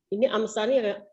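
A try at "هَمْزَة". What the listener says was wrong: Hamzah bukan Hamsah ya. Hamzah.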